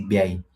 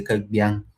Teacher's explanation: they always labialize the ba sound